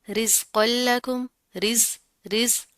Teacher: رزق لکم رز اب یہاں پر کیا ہے، زا کے اوپر جزم آ رہی ہے، اس کو آپ نے پھر اوپر بھی میں نے بتایا کہ زا کے اندر مضبوطی پائی جاتی ہے، سختی پائی جاتی ہے، تو آپ نے اس کو رس رس اس طرح نہیں کرنا، سین کے ساؤنڈ نہیں آنی چاہیے اندر